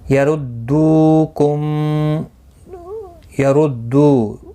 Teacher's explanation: میم ساکن کے بعد متحرک با آیا ہے، اخفاء شفوی ہوگا، گنہ کے ساتھ پڑھیں گے